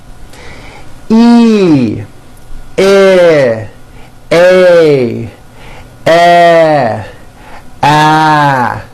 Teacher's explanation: Notice with each of these vowels, my jaw is opening a little bit more and more. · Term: front vowels